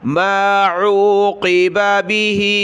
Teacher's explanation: بِمِثْلِ مَا عُوقِبَ، قاف کو موٹا کریں